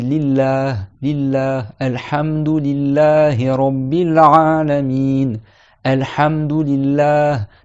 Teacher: le nom de Allah, quand il est précédé par une kasra, eh ben, on prononce le lam de manière non emphatique, muraqqaqa.